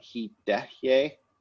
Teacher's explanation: So native English speakers will tend to say he tehye, but we really want he dehye with no aspiration on the T